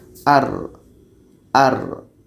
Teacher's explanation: ada suara yang mengalir di tengah-tengahnya keluar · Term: ro